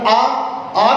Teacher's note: आ खोलते हैं तो हमारा मुंह पूरा खुल जाता है, वृत्त की तरह गोल नहीं रह पाता है